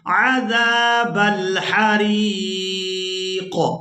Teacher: وقف کریں گے تو وقف کی صورت میں قاف جو ہے یہ ساکن ہو جائے گا. قاف ساکن ہوگا تو یہ قاف حروف قلقلہ میں سے ہے اور یہاں پر یہ ساکن ہو جائے گا تو یہاں پر ہم قلقلہ کریں گے